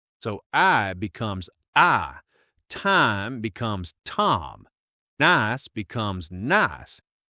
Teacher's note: taking a two-part vowel sound and making it one · that I sound often gets flattened out into an A sound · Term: monofontization